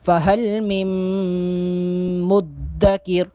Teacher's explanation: مدکر دال پر چونکہ تشدید ہے دال کو تھوڑا سختی کے ساتھ جماؤ کے ساتھ ادا کریں گے.